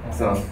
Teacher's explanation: with the low tone, it means old age